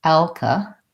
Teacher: in the second syllable, we have vowel schwa. So the second syllable sounds like ka. It's short and reduced.